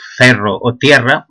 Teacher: en cuenta de ferro o tierra, pronunciado con es abiertes